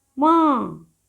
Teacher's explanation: इसकी ध्वनि यानी स्वर का उच्चारण मुख और नासिका दोनों से किया जाता है। यानी कि बोलते समय हवा नाक और मुंह दोनों से बाहर निकलती है। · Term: अनुनासिक